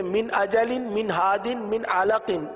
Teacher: اب دیکھیے ان تینوں نون میں ہم نے کیا کیا، نون ساکن میں ہم نے اظہار کیا، جیسے من اجلن، من ہادن، من علق، ان تینوں نون ساکن، میم نون زیر من، یہ جو نون ساکن ہے اس میں ہم نے اظہار کیا، یعنی ظاہر کر کے پڑھا، غنہ نہیں کیا